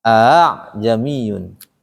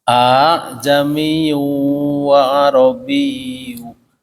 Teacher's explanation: Tashil ini dia kan ada dua hamzah nih. A. Tetapi bacanya jangan A. A yang kedua kita samarkan. Jadi A. Kayak kita ngegeret tas tuh ya.